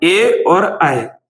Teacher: ऐसे याद रखिए कि कंठ और तालु को मिलाकर ही ए आई बनता है, यानी आ के साथ ई आ जाए तो ए बनता है, या बड़ा आ के साथ ई आ जाए तो ए बनता है। ए और आई जो है वो कंठ तालु से बोले जाते हैं